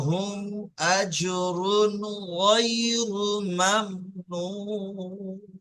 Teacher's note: আজরুন গইন এসছে, এখানে গুন্না দেবেন না, ঠিক আছে।